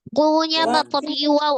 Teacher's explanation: pengucapan huruf wau dengan memajukan kedua bibir